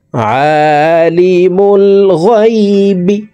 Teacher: আইনকে হলকের মধ্যখান উচ্চারণ করব। আইনের উপরে খারা জবর আছে।